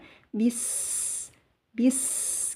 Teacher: sin sukun, sin mempunyai sifat hamas, yaitu keluarnya napas. Jadi sin sukun harus dikeluarkan desisnya atau sofirnya ya.